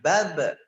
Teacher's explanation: Pertama, jangan sampai huruf ba yang sukun ini tertinggal pantulannya. Karena huruf ba termasuk huruf qalqalah, harus ada pantulan.